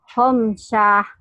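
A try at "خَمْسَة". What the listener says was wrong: Kok panjang? Pendek. Khomsah. 5 khomsah. Khomsatun. Khomsah. Ini kok ada hanya? Kok ada hanya? Tak marbuto. Tak marbuto itu taknya berubah menjadi ha. Khomsah. Salah. Ini harus khomsah.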